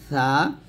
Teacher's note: সাটা আমরা জিহ্বাটা উপরে দাঁতের আগে লাগাবো পাতলা করে, জিহ্বাটা যেন নিচে দাঁতের না লাগে, উপরে দাঁতের আগে লাগিয়ে আমরা সাট উচ্চারণ করবো পাতলা করে সা।